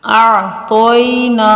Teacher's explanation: حمزہ عین زبر اع، طویا زبر طوئی، اعطوئی، نون الف زبر نا، اعطوینا، انا اعطوینا، طا پر حروف بھی ہے پر پڑھا جائے گا، اور حروف لین ہے نرمی سے پڑھیں گے اس کو، نہ ہی اس کو کھینچ کر لمبا کریں گے اور نہ ہی اس کو جھٹکا دے کر پڑھیں گے